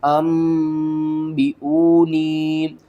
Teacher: نون ساکن یا تنوین کے بعد اگلا حرف با آ جائے تو ہم نون کی آواز کو میم کی آواز میں بدل کر پڑھتے ہیں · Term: اقلاب